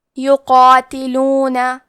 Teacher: کلمت یقاتلون میں حرف القاف ہے تو ہم قاف کو موٹی آواز میں پڑھیں گے، کیونکہ اس کے بعد مد الف ہے اور مد الف میں پیچھے والے حرف کا حکم لیتے ہیں تفخیم میں اور ترقیق میں، تو ہمیں مد الف کو بھی بھاری آواز میں پڑھنا ہے۔